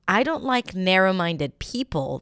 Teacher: if I were to say, I don't like narrow-minded people, the stress shifts from 'minded' to 'narrow'.